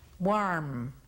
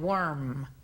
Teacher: Y aquí esta palabra también nos ocasiona problemas a veces porque la A es una vocal que se hace enfrente de la boca y la O, como decía anteriormente, es una vocal que se hace en la parte de atrás de la boca